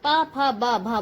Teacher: जब हम प, फ, ब, भ बोलते हैं तो हमारे दोनों होंठ आपस में टकराते हैं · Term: ओष्ठय